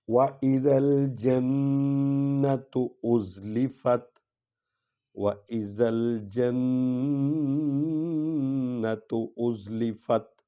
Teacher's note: وَإِذَا الْجَنَّةُ أُزْلِفَتْ، وَإِذَا الْجَنَّةُ أُزْلِفَتْ، نون میں نون غنہ کریں گے اور شد والے حرف کو 2 بار پڑھیں گے